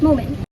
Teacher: the final t sound is omitted and the word is pronounced as moment · in the word moment, the final t sound is omitted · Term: elision